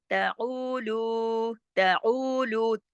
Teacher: ता को ज्यादा नहीं खींचना, ऊ और लू दोनों 2 हरकत खींचेंगे